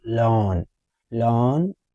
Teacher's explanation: In British English, we will say longitude. Three syllable word. The stress is on the first syllable.